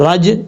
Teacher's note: یہاں جیم ساکن ہے اس لیے یہاں پہ قلقلہ کریں گے